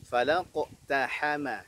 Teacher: Qafnya kolkolah tebal, taknya tipis, ha-nya tipis, ma-nya tipis